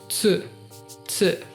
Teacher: E o tu, eles falam tsu. Como se tivesse um S no meio.